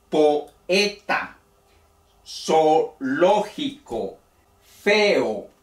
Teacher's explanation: cada vocal si bien van vecinas corresponden a sílabas diferentes · hay dos vocales fuertes Entonces se pronuncian de manera separada